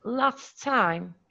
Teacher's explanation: we don't pronounce the final voiceless alveolar plosive, but we only pronounce the initial sound of the following word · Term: contextual elision